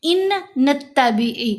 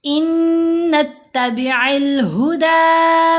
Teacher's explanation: ये जो साकिन नून है ये मर्ज हो जाएगा मुशद्द के अंदर · یہ جو ساکن نون ہے یہ مرج ہو جائے گا مشدد کے اندر۔ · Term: इदगाम, ادغام